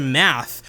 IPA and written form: mæθ (MATTH)